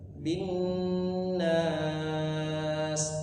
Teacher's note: binnya ujungnya ditahan 3 harokat panjangan